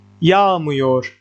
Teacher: Negative suffixes, remember, don't take the stress, but they affect the stress. The stress comes to the syllable before them.